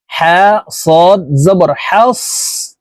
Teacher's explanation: সদ কলকলার হরফ না ধাক্কা দেওয়া যাবে না